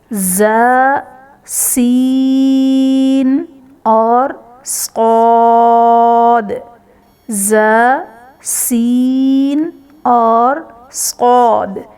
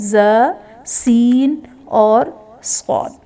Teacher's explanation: حروف صفیریہ سختی اور سیٹی والے حروف کو کہا جاتا ہے۔ ان حروف کو ادا کرتے وقت سختی اور سیٹی آتی ہے۔